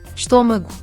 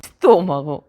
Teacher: Con o pechado, pois en galego é con o aberto.